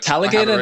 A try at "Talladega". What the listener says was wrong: Talladega. No, you're saying You're switching the G and the D. It's Talladega, not Talladega. No, you said